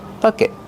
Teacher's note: Use a stop T at the end. Not bucket. Stop the air with your tongue.